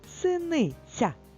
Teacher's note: в слові синиця Ми чуємо м'який звук ць який в схемі позначено двома рисочками правда і нарешті нас чекає